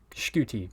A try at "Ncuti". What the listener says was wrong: He got it wrong, so it's Ncuti. So the N is. I thought the N wasn't pronounced. The N is pronounced, so it's Ncuti Gatwa.